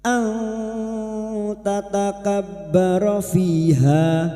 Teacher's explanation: Ikfa hakiki. Kita samarkan bunyi nun sukun dan mendengung selama tiga harakat